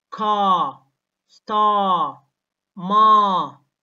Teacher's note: flat ra or flat R, where the body of the tongue is low in the mouth, like British English.